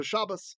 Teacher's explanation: it's shabas in ashkanazi because there's no dages in the T